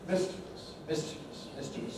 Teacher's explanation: Mischievous, mischievous, mischievous, stressed on the miss.